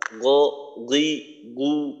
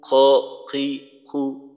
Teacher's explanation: গইনটা হলো একটু নিচের থেকে, খ হলো গইনের তুলনায় একটু উপরের অংশ। তো এখানেও একই বিষয়, গইনের মাঝে বাতাস থাকে না, খর মাঝে বাতাস থাকে, বাতাস চালু রাখতে হয়। · গইনের মাঝে বাতাস থাকে না, খর মাঝে বাতাস থাকে, বাতাস চালু রাখতে হয়। তো এই জন্য খ একটু উপরে, আর হলকের শেষের যে অংশটা গইন খ উচ্চারণের জন্য ব্যবহার হয়, এটাও আমাদের বাংলার ক্ষেত্রে অপরিচিত।